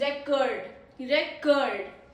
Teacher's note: It is a verb because of stress in second syllable